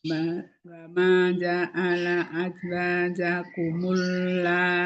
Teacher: Di dalam satu kalimat tadi ya sudah dijelaskan, berarti itu mad wajib muttasil, panjangnya 4 atau 5 harokat